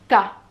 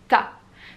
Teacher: Quand vous allez jouer, vous n'allez pas prononcer le son Ta, mais vous allez juste utiliser l'emplacement de la langue. Quand vous allez mettre votre langue en haut, derrière vos dents du haut pour faire le T du Ta, ok, l'air va s'arrêter. Vous allez bloquer l'air et il ne va plus avoir de son.